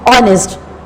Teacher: In this word, H is silent and the sound starts from the O